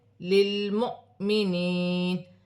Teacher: واو خالی ہے، جزم کی حرکت حمزہ پر ہے، حمزہ پر جزم کی حرکت ہوگی تو حمزہ جھٹکے کے ساتھ پڑھی جائے گی